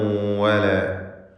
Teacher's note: വാവ് 2 ചുണ്ടുകളിൽ നിന്ന് തന്നെ ഉച്ചരിക്കണം. ആളുകൾ തെറ്റായി താഴെ ചുണ്ടും മേലെ പല്ലും ചേർത്ത് പറയുന്നത് അബദ്ധമാണ്, സൂക്ഷിക്കേണ്ടതാണ്.